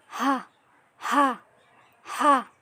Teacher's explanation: হামজা আর হার মাখরাজ একই হলকের শুরু হতে।